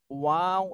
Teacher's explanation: এক আলিফ টান দিতে হবে তাহলে ঠোঁটের একটা গেল এরপরে ওয়াও এটা দুই ঠোঁট গোল করে উচ্চারণ করতে হবে এবং তিন আলিফ টান দিতে হবে